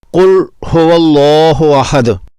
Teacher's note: اگر کوئی اس کو قل پڑھتا ہے قل هو اللہ احد تو وہ غلطی کر رہا ہے۔ اس لام کو بغیر ہلائے، بغیر قلقلہ کے قل پڑھنا چاہیے